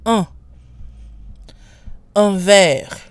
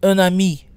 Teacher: So again, there's a pronunciation change when un is followed by a vowel. Un is no longer nasal, and we pronounce the N. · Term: liaison